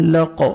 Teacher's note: من خلق خا کو موٹا کر کے پڑھنا ہے, قاف کو موٹا کرنا ہے, اور جب وقف کریں گے ساکن کریں گے قاف کو, لام زبر قاف جزم لق, اور قاف پہ قلقلہ کریں گے, ڈبل ساؤنڈ آئے گا